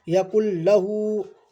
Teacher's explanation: کن نہیں پڑھیں گے، کل پڑھیں گے کیونکہ لام میں ملائیں گے، لام میں تشدید ہے، تشدید کو اس سے پہلے والے سے ملا کر پڑھتے ہیں۔